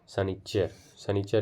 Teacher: खोरठा में तालव्य सा और मूर्धन्य सा का व्यवहार नहीं होता है, दोनों की जगह पर दंत सा प्रयुक्त होता है